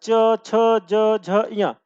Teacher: है तालू या तालव्य यानी कहने का मतलब क्या है कि जब आप चा वर्ग का उच्चारण करते हैं तो आपका जो जीव होता है व तालू को क्या करता स्पर्श करता है